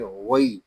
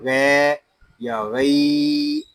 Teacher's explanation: لام لام زبر لل، علل، غین یا زبر وی، علل وی، یہاں غین کو ہم پر پڑھیں گے کیونکہ یہ حروف مستعلیہ میں سے ہے، یہاں یا لین بھی ہو رہا ہے، اس کو کھینچ کر نہیں پڑھیں گے، اس کو نرمی کے ساتھ پڑھیں گے ، اس کو پڑھیں گے وی، اس کو غے یا غی